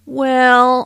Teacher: well is used as an introductory word notice how the vowel is drawn out · Notice how the vowel is drawn out to sound like well.